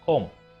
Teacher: There is no B sound in that word. Although there is letter B at the end of the word, we do not pronounce this as comb.